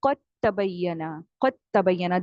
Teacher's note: دال کو آپ نے کمپلیٹلی مرج کر دینا ہے، دال کو نہیں پڑھنا. ٹھیک ہے، دیکھیں ایڈوانس تجوید آپ کو یہ بتاتی ہے کہ کون سے ورڈز لکھے ہوئے ہیں لیکن آپ نے اس کو مرج کر دینا ہے، پڑھنا نہیں ہے.